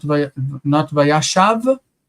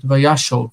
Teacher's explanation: we need to read this second kamatz as O. It's a U quality vowel. Vayashov, not vayashav, but vayashov.